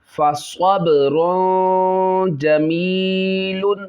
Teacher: با میں قلقلہ کریں گے، قلقلہ خوب ظاہر، تنوین اور جیم میں یہ اس میں اخفا ہوگا، غنہ کریں گے۔